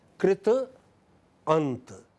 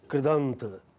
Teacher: In Sanskrit, when they come together, they become kridant, okay? Ta, which was voiceless, becomes voiced.